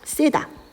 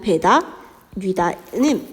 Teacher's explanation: 보상적 장음화가 동반되어서 길게 발음하게 되는 겁니다. 그러니까 축약을 보상하기 위해서 장음 길게 발음된다라는 거죠.